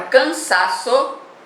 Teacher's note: ela é uma palavra paroxítona porque ela tem como sílaba tônica a penúltima